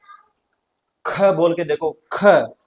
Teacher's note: थोड़ा लंबा खींचना पड़ता है। ख तो प्राणवायु मुंह से अपने आप ज्यादा बाहर निकल रही है। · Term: महाप्राण